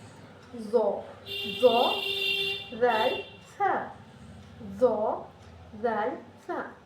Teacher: پھر آتا ہے زو، زو زال سا، زو زال سا، تو یہ کیا ہوگا، یہ جو ہے اوپر والے دانت کو یہ لگے گا، اوپر والے دانت کے جو نوک والے حصہ ہوتا ہے ہمارا، جو دانت کا کونا ہمارا مطلب جو زبان کا جو نوک ہوتا ہے، اوپر والے حصے کے دانت کے بالکل نوک پر لگ کر ادا ہوگا